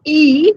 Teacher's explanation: the front of the tongue is raised to as high in the mouth as it can possibly go without creating a closure